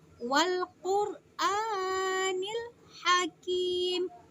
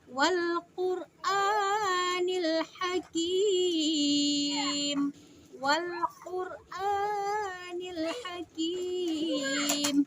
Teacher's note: bukan ha besar teman-teman, tapi ha kecil yang ada di tenggorokan. Jadi wal Qur'anil hakim, dan kim di sini yaitu sebagai mad arid lisukun.